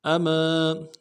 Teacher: میم کے بعد الف مدہ ہے، ایک الف دال میں کھینچیں گے